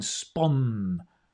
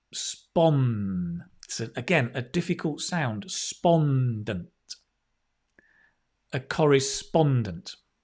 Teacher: Or maybe you'd like to work as a correspondent. Now, a correspondent, the stress on the O-N, spon